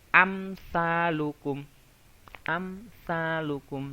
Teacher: tidak mendengung tidak samar-samar tapi jelas